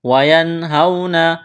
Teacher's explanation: نون ساکن کے بعد ہا ہے، حروف حلقی ہے تو یہاں پر غنہ نہیں کریں گے، آواز ناک میں نہیں چھپائیں گے